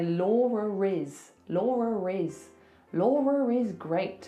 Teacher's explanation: So that schwa sound sometimes is spelled like e r. So if I have to link my name to something else that's a vowel, I have to put an r in there. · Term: intrusive R